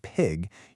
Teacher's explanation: you should feel that little puff of air, right? That's called aspiration. But even if you tried really hard to say it without that puff, it would still mean pig.